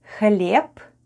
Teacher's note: Б /b/ at the end of the word is pronounced as /p/